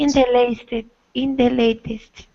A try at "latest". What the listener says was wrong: That's it. Latest. A. Good.